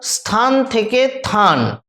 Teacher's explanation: শব্দের প্রথম থেকে যদি ব্যঞ্জন ধ্বনি লুপ্ত হয়ে যায় আদি ব্যঞ্জন লোপ